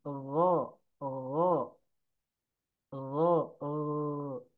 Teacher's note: Dan memiliki sifat rokhwah. Jadi ngalir ya, jangan sampai mantul.